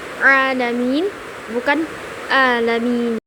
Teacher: dia itu keluar dari tengah tenggorokan menggunakan ain